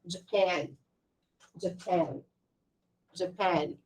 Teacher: a pronúncia desse país é a sílaba tônica é na segunda sílaba, não é na primeira